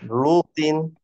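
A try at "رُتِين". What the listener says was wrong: না রুতে টান নাই, রুতিন,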